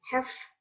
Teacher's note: So the verb sounds in the word have, the voice becomes f. Okay, voice v become voiceless f, and it is called devoicing.